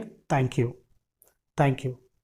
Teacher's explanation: तो air flow दांतों के बीच से जाएगा